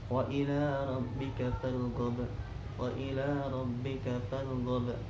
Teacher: ada qalqalah kubro di akhir kalimatnya berupa huruf ba